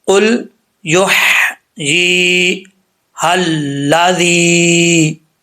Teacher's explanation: یہ ذال جو ہے سیٹی کے بغیر ہے، اس میں سیٹی نہیں آنی چاہیے۔ اور آگے یا مدہ ہے، اس کے اوپر مد منفصل ہے۔